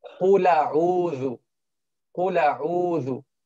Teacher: He moves the haraka of the Hamza to the second letter before it and drops the Hamza. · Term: Naqlul Haraka